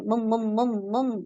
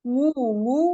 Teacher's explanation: आपने बगैर पेश को गोल किए आपने पढ़ा है उसको यानी आपके होठ आगे की तरफ आए ही नहीं थे